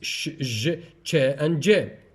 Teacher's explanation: the tongue blade is close to the alveolar ridge, and the main part, that is the front of the tongue, is raised towards the hard palate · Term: palato-alveolars